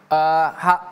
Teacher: Hu-nya panjang 2 harokat.